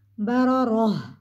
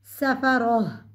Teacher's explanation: गोल ता वक्त की सूरत में गोल हा में बदल जाएगी